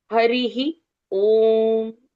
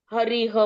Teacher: विसर्ग का उच्चारण ह के साथ पहली ई की मात्रा, ऐसे उच्चारण आएगा।